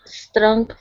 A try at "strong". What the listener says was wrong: Now, let's try strong one more time. Instead of saying strong, okay, give me a good R sound. So it's strong.